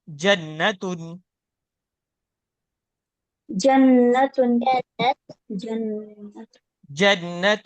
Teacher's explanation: बीच जबान बीच तालु से जीम अदा हो रहा है। · بیچ زبان، بیچ تالو سے جیم ادا ہو رہا ہے